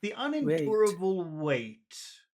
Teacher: we want to say this with a falling tone starting high and finishing low